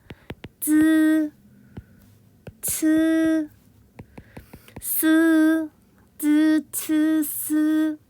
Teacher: 혀를 윗니 뒤쪽에 붙였다가 떼거나 가까이 대면서 발음하는 거예요